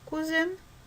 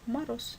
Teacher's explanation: Ж – звонкий Ж – жена или глухой Ш – муж. З – звонкий З – кузен или глухой С – мороз.